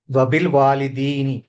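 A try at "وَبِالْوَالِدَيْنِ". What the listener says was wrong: లేదు, చివర్లో తప్పు చేస్తున్నారు. యామద్ ఒకసారి ఇంకోసారి చూడండి. యామద్దేనా కాదా?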